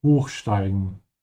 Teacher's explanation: So this is a separable verb. Make sure to emphasize the prefix.